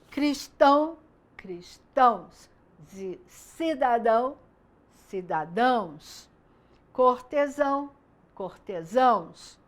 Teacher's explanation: Então, eu tenho cidadão, o dão é a parte mais forte na pronúncia da palavra, por isso é forte. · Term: oxítonas